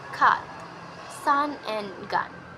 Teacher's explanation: this FS is articulated in three condition that is uh uh placing the tongue in the low position and the central part of the tongue is used to articulate this sounds and unrounded lip shapes is also used